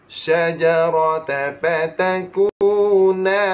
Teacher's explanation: Sifat shin ada tafashi. Maksud tafashi hembus.